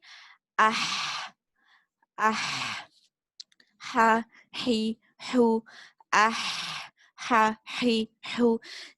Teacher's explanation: This ha, you must give a lot of air to travel to your middle throat. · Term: al-ha